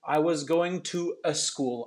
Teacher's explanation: i heard a little bit of a shadow vowel before the word school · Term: shadow vowels